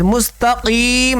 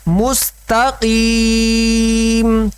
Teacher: یہ قاف موٹے روپ میں سے ہے لیکن موٹے حروف کے نیچے اگر زیر آ جائے تو اس کی موٹائی میں کمی آ جاتی ہے